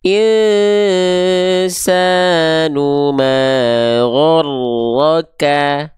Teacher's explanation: cukup huruf kafnya hanya berupa percikan-percikan nafas, hanya berupa percikan-percikan nafas saja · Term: percikan nafasnya, sifat hamsnya